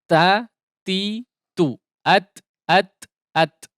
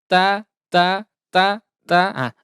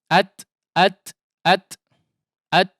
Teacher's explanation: ada percikan udara ya, percikan udara halus atau disebut dengan hams